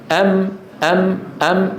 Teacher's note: هي صوت يخرج من الخيشوم ما هو الخيشوم التجويف الانفي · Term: الغنه